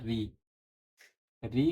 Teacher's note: ऋ का उच्चारण जो है मुर्धा से होता है